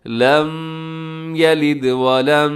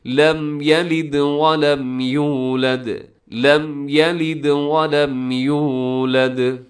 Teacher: آواز کو ناک میں نہیں، اظہار ظاہر کر کے تیزی سے